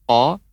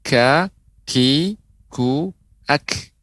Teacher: Kalau huruf qaf itu lebih ke dalam, qa, adapun yang kaf itu lebih maju